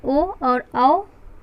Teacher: सातवां हमारा है कंठोष्ठव, अर्थात कंठ और ओष्ठ को मिलाकर जो वर्ण बोले जाते हैं वो कंठोष्ठव कहलाते हैं। इसके अंतर्गत हमारा आता है ओ और औ, जिसका सूत्र है ओ दाव तो कंठोष्ठम।